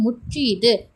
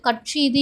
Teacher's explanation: ஆயுத எழுத்து தனக்குரிய அரை மாத்திரை அளவிலிருந்து குறைந்து 1/4 மாத்திரை அளவில் ஒலிக்கிறது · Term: ஆயுதக் குறுக்கம்